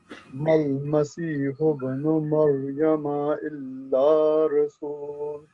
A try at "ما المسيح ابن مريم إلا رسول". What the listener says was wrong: Again, elongated, dragged a little longer.